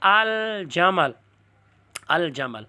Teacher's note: تو جب حروف قمریہ ہوتے ہیں تو الف لام لکھا جاتا ہے، پڑھا جاتا ہے، اس پر تلفظ ہوتے ہیں ، القمر۔ اسی طرح الجمل، الجمل، تو یہاں دیکھو الف لام